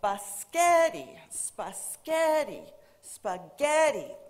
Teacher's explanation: the center syllable was pronounced louder longer and higher than the rest of the syllables